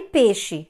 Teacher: E quando eu falo peixe, esse i desaparece. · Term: monotongação